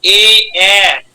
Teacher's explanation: গলা এবং তালু, কণ্ঠ তালু, তাই দিয়েছে কণ্ঠ তালব্য ধ্বনি